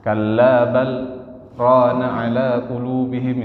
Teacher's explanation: Berhenti sejenak tapi enggak boleh nafas, langsung lanjut. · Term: saktah